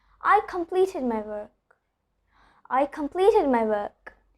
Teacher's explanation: R is before a consonant, so I'm not pronouncing it. Instead, I'm continuing the vowel sound, which is before the letter R.